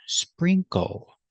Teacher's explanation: Pronunciation, sprinkle. Put the stress on the first syllable.